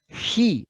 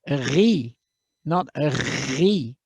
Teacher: it's an unvoiced he, as in Johann Sebastian Bach